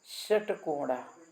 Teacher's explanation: जिह्वा का जो पीछे का हिस्सा है, मूर्धानम, मूर्धा को कुछ स्पर्श करता है। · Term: मूर्धन्या